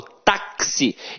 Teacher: o X aqui tem som de KS. Ou seja, uma letra tem 2 sons. Quando uma letra tem 2 sons, eu chamo de dífono.